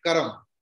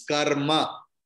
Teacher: In Sanskrit, in Hindi, wherever you see any word like karam, you say karam. But in Sanskrit, it is karma. Ma is full.